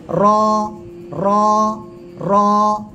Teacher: জিহ্বার আগার পিঠ উপরের তালুতে বাড়ি খাবে, বা উপরের তালুর সঙ্গে লাগিয়ে উচ্চারণ হবে। জিহ্বার পিঠ তার বরাবর উপরে তালুর সঙ্গে লাগিয়ে মোটা আওয়াজে উচ্চারণ হবে